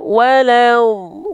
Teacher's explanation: hati-hati lamnya jangan panjang